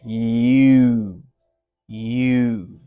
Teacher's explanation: And in this one, you're gonna get this sort of U sound where it's going to change a bit almost like a def thong as you go from the Y to the uh because your lips are going to move. And you can leave your tongue more or less where it is. The arch will be pretty high for the Y and it might move back a bit.